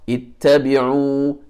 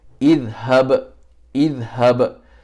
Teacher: you read the hamza wasal with a kasra